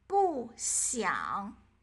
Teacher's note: When they are followed by a syllable with the first, second, or third tone, both 不 and 一 take on the fourth tone.